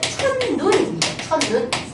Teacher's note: 돼요 그래서 얘는 결론 본적으로이 니은으로 시옷이 니은으로 바뀌기만 한게 아니거든요 시옷이 디귿으로 바뀌고 디귿이 니은이 만나서 디귿이 니은을 영향을 받아서 니은으로 바뀌는 거예요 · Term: 비음화